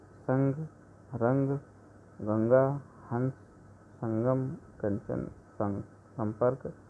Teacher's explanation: अनुनासिक वर्णों को बोलते समय हवा नाक और मुंह दोनों से निकलती है, जबकि अनुस्वार के उच्चारण में हवा केवल नाक से ही निकलती है।